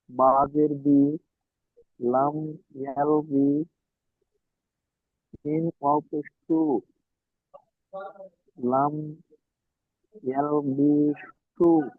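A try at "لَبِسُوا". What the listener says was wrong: লাম ইয়াল বি টান হবে না, বাজের বি, লাম ইয়াল বি, সিন ও পে সু, একটু বেশি করে টান দেবেন, লাম ইয়াল বিসু।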